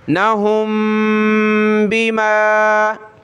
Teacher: मीम साकिन, उसके बाद बा है तो नाक में आवाज़ पैदा करेंगे